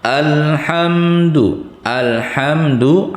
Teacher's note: ha itu huruf ha kecil, tadi andakannya di tengah tenggorokan